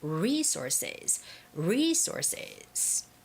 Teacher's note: when you're reading this word, the stress goes on re.